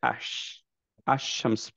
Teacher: আল নিয়ে আসবো কিন্তু পড়বো হচ্ছে আশ আশামস পড়বো আলশামস পড়বো না